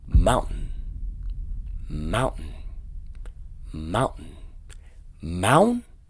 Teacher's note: This is a glottal stop, which means that the T itself is completely removed and it is replaced with a pause or a break.